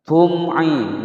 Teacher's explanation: mim sukun bertemu ain dibaca jelas, hukum bacaan izhar syafawi.